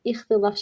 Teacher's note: sondakı t d kimi tələffüz olunacaq